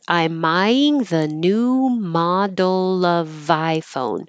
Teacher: of here is before a vowel so we do keep the V and we connect it